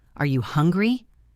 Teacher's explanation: My voice rises on hungry to show that I am waiting for an answer. Native speakers use this music to signal when they are done talking or when they want you to speak.